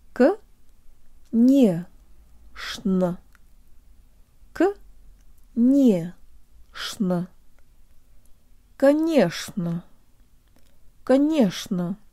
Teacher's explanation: the ch is pronounced sh here with a low tongue